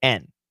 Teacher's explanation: When we have and, the word and, the D is almost always silent.